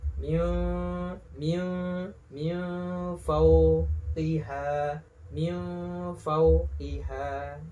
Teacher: Jadi dibaca dengan samar, samar-samar di bibir disertai dengung. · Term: ikhfa hakiki